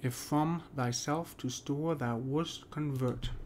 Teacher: Let's get the primary stress. Well, we got self, and then we got vert and convert.